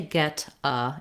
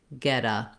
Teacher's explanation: say get uh in american english it sounds more like getta i use a flap for that t same as i use a flap in the middle of words like water and better · the t and d sounds sound the same at the end of words in american english when the next word starts with a vowel